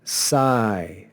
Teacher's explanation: see in the first syllable of this word the diphthong a every diphthong is long so we have the long diphthong that makes this a long syllable